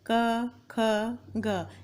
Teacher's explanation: आप बोलेंगे तो ऐसा प्रतीत होगा कि आवाज गले से निकल रही है, सीधे गले से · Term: कंठव्य